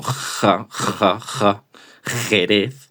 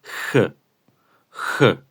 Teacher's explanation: Es una J suave. Es de hecho sale aire al pronunciarla.